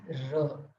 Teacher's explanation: I touch my tip of the tongue at the base of my teeth, not at the tip of my teeth. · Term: Danta Mool